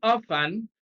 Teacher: often stress is on the first syllable